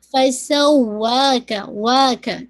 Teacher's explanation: واو پہ اگین دیکھیے میں نے آواز کو تھوڑا سا ابھاری ہے، یعنی تھوڑی سی اونچی ہوئی ہے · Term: نبر